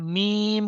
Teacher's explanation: जब हम मीम कह रहे होते हैं तो होठों का अगला हिस्सा टच कर रहा होता है।